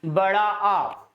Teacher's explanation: ये जो सिचुएशन घटित होती है जिसमें मुख हमारा पूरा का पूरा खुल जाता है, वही विवृत कहलाता है। और विवृत स्वरों की संख्या केवल और केवल एक है, जो कि बड़ा आ।